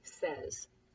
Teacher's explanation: a Y in this case sounding like an E, who knows why, and S sounding like a Z